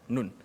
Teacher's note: makhraj nun mati tu di hujung lidah mengena langit atas.